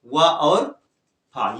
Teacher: वा में निचला होठ और ऊपर के दांत से ये बोला जा रहा है, निचले होठ और ऊपर के दांत से। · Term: दंतोष्ठ